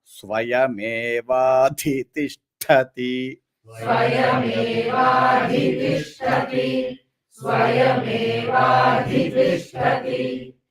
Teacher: that dha is Mahaprana, then ti is Alpa Prana. You should not stress that ti. Then but tha again Mahaprana.